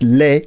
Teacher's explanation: Anyway, I thought there was a Z sound there as a linking sound between les, right, les, because you end with a vowel sound because the S is not pronounced, right? It's not les or les, it's le.